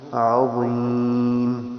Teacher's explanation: عظیم میں عین ضا دونوں کا خیال کرنا ہے، یعنی زا نہ ہو، زال بھی نہ ہو